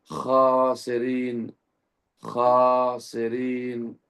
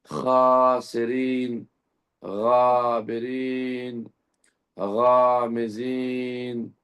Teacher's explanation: ضروری ہے کہ ہم جب غین اور خے کو ادا کریں تو حلق کے شروع کے حصے سے ادا کریں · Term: حروف حلقی